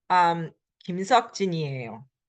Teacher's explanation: Again, it's not 김석진이에요, but the final consonant carries over. If there's no space between, 김석진이에요.